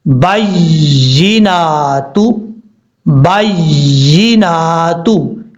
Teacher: اب ہم جب اس کے ہجے کریں گے، با یا زبر بائی، یا زیر جی، بائی. اب ایک دفعہ یا جو ہے با کے ساتھ ملا کے پڑھی جا رہی ہے، پھر یا کی جو حرکت ہے وہ پڑھی جا رہی ہے شد کی وجہ سے